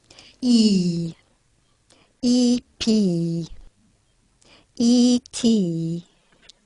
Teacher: so this is a high front vowel e e p e t tongue in e is high and · Tongue in E is high and front. I'll play it again and you can see that the articulation is up high and towards the front of the mouth.